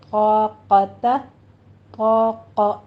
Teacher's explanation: طا میں طا اور الف دونوں پر ہو جائیں گے، حروف مستعلیہ میں سے ہیں. آگے قاف زبر ق، یہ بھی موٹا ہی پڑھا جائے گا، یہ بھی پر پڑھیں گے.